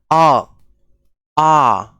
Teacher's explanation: जब आप बोलिएगा अ तो देखिए आपका मुंह पूरा खुला हुआ है और आवाज डायरेक्ट कंट से आ रही है आ आ कहां से आ रही है आवाज कंट से आ